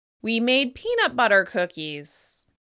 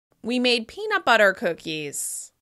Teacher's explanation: As you can hear, I'm stressing peanut the most.